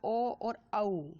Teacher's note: कंठ एवं ओष्ठ में आएगा ओ और औ